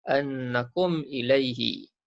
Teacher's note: Maka hukum di sini ialah izhar syafawi. Jelas dan terang kita sebut huruf mim mati tu. Tidak ada dengung.